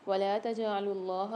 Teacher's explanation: اللہ کے لام کو موٹا پڑھیں گے، جیم میں قلقلہ کر کے پڑھیں گے۔